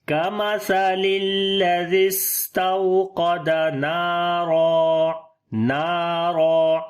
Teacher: یہاں پر واو لین ہے، نرم پڑھیں گے، قاف کو موٹا پڑھیں گے · اجتماعی ساکنین کی وجہ سے یا جو ہے وہ گر گیا ہے، یا حذف ہو گیا ہے، تو زال کو ڈائریکٹ سین کے ساتھ ملائیں گے تو پڑھیں گے کَمَثَلِ الَّذِي، سین کے اوپر صفت ہمس اور صفت صفیر ہوگی، سیٹی کی آواز، اور سانس جاری کریں گے، آواز میں نرمی آئے گی۔